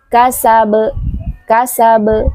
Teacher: Ingat, ketika kita mengucapkan huruf qalqalah tidak boleh ditekan kasab. Tidak boleh seperti ada huruf hamzah di belakang huruf ba. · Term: qalqalah kubra